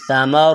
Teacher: سا کی آواز باریک ہوگی اور نرم ہوگی، اس میں سیٹی نہیں ہوگی